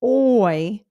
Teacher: notice it starts from the top and then moves to like a different sound that's a dipthong